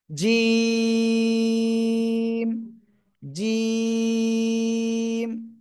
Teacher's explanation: জিম অক্ষরটা উচ্চারণ করব জিহ্বার মধ্যখান, তার বরাবর উপরে তালুর সাথে লাগিয়ে